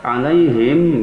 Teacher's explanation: Alaihim mim mati bertemu hamzah, itu adalah idhar syafawi yang hurufnya 26 selain mim dan ba, sehingga mim dibaca jelas